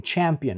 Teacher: very interesting because they are actually a combination of two sounds it's a combination of a stop and a fricative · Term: affricates